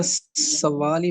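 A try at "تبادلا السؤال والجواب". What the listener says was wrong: सवाली क्यों पढ़ा है आपने? सवाली क्यों पढ़ा है? आप देखेंगे कि यहाँ पे वाव के ऊपर हमजा है, ठीक है। तो ये वाव की साउंड नहीं होगी, ये हमजा की साउंड होगी। तबादली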